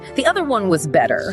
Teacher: I think the stress falls on better